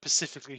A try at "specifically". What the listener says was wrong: That's specific. That's specifically, not specific.